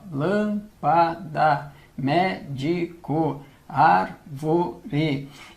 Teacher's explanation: a sílaba tônica, em todos esses casos aqui, é a antepenúltima. Sendo a antepenúltima a sílaba tônica, nós estamos diante de uma proparoxítona.